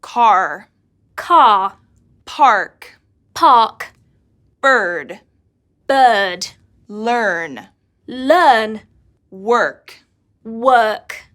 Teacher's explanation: standard British English and standard American English is the silent R in British English the r sound is not pronounced unless there is a vowel sound after it while in American English it is pronounced